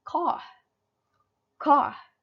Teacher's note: In UK they pronounce car as car, car, because the R sounds, they omitted the R sounds.